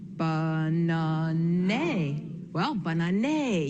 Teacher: I would sound it out like an open syllable long A.